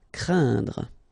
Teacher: keep in mind that it goes in your nose, so you don't hear any N when I pronounce it, and then C plus R will produce the sound cr, craindre. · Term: nasal